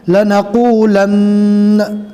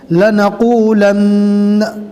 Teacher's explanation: اس میں دونوں نون کو پڑھا جائے گا، اس لیے کہ یہاں پر تشدید ہے، تشدید والے حرف کو ڈبل پڑھا جاتا ہے